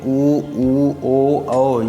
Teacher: ऊ ओ औ ही ऐसे हैं जिनको बोलने पर हमारा मुंह गोलाकार हो जाता है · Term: वृत्तमुखी